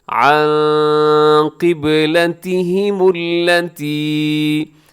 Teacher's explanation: آگے عن قبلتہم التی، یہاں نون ساکن ہے اور نون ساکن کے بعد کیا ہو رہا ہے؟ قاف آ رہا ہے، تو آپ نے یہاں پر اخفا کرنا